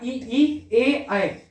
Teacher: तो इसमें क्या होगा, यदि बात करें जीवा के में, मतलब जब इसमें क्या होगा, देखो पहले यदि बात करें अग्र स्वर, मतलब कि जीवा आगे की तरफ जाएगी, इन स्वरों के उच्चारण में जीवा मुंह के आगे की ओर जाती है